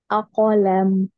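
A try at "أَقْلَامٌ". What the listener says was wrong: A-A-nya tipis A. A-kolam. A-kolam mengalir. Kof tanpa nafas.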